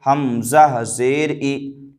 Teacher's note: زیر کو جلدی پڑھیں، تھوڑا بھی نہ کھینچیں، زیر کی آواز نیچے کو جاتی ہے